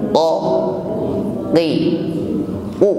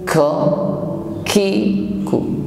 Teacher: mengucapkannya tidak disertai dengan nafas yang mengalir